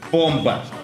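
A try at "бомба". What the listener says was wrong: Bomba. Bomba. Not boomba. Bomba.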